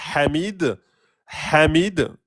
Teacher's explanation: Ça vient vraiment du milieu de la gorge. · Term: le ha gorge